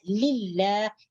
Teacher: cara membacanya lafzul jalalah dibaca lillah, dibaca tipis, dibaca tarqiq. Jangan dibaca tebal seperti mengatakan lillah.